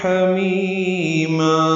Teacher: حمیم حمیما ہا دونوں میں وسط حلق سے. می یا مدہ ہے دونوں الفاظ میں.